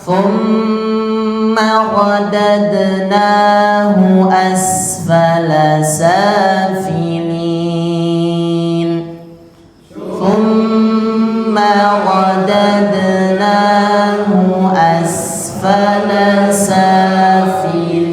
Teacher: Jadi panjangnya harus terdengar, harus tahu di situ ada tasydid pada huruf mim.